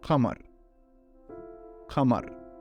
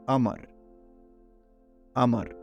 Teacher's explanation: Another example is moon, qamar, qamar. Again, replace the qa with Hamza